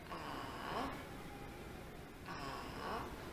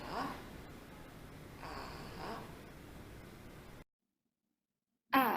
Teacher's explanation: descendant légèrement puis remontant, un peu plus compliqué que les autres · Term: troisième ton